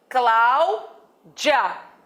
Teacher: Já no meu nome não existe átona pré-tônica. Existe pós-tônica. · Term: átona pós-tônica